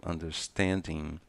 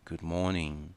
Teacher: Eu falei também sobre as letras ING. A grande maioria das palavras não tem o G dentro da pronúncia. Nós recuamos para a letra N sem fechar os lábios.